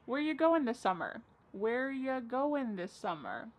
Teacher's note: Where ya, which is you, goin', dropping the G.